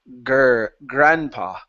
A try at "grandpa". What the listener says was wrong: So you're pronouncing an oo. You're saying guam instead of goo.